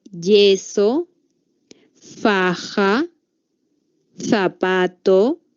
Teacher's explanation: aquí el aire pasa rozando un estrechamiento es decir que la boca se cierra se entrecierra y puede haber un paso de aire hacia afuera no como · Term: fricativos